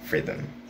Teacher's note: the onset of this first syllable has two consonant sounds the f and the r and the one from the second syllable has only one consonant